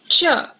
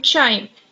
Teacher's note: The next sound is ch. T and sh would combine together and sound as ch, as in chime.